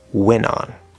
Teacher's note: when you have n t and vowel sound the t will disappear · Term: nt plus vowel